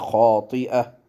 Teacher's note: ये जो गोल ता होती है, इस पे जब वक्फ़ करते हैं तो इसको हा पढ़ते हैं